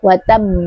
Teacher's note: huruf ba salah satu huruf yang memiliki sifat qalqalah. Jadi jangan lupa diberikan qalqalahnya ketika kita waqaf.